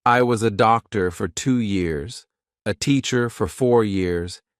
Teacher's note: It's just neutral. Nothing happens with the mouth. Nothing happens with the tongue.